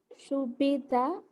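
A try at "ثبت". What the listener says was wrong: Not su. ഏകദേശം പ്രൊനൗൺസിയേഷന്റെ അടുത്തേക്ക് വരുമ്പോൾ മലയാളത്തിലെ ദായി പോകുന്നുണ്ട്. മലയാളത്തിലെ ദായുടെ അടുത്ത് വരുന്നുണ്ട്. ടെമ്പർ കൊടുക്കണം. മലയാളത്തിലെ ദാ പറഞ്ഞു നോക്കി. ദ പദം പദം പദം എന്ന് പറയും. മതം എന്നൊക്കെ പറയുന്നിടത്ത് ദാ വരുന്നുണ്ട്.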